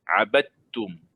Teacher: Jangan ada makhraj dal di situ. Terus makhraj ta. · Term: idgham mutajanisain